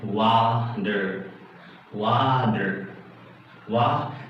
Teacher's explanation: you can make it as a flat D sound, just like water